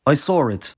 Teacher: it’s pretty noticeable when a [ɹ] sound that otherwise isn’t there gets spoken, and it’s specifically there to break up vowels, like in “I saw(r) it”. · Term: Intrusive R, intrusive R